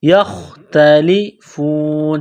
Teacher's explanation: خوا کو موٹا کرنا ہے، جس طرح انسان گلے سے بلغم نکالتا ہے اسی طرح اس خوا کو نکالنا ہے